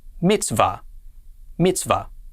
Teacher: then we have a schwa which makes no sound finally the vav with a comets would be pronounced va and